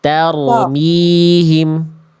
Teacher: Karena kalau ada roh sukun sebelumnya fathah berarti roh sukunnya dibaca tebal.